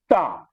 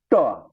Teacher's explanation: मूर्धा, टा, जीभ आपकी मुड़ जा रही है